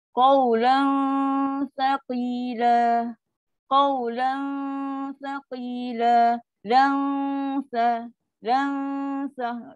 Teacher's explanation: Dia pun dengung dia tak tinggi. Bukan dengung yang tafkim. Dengung yang rendah.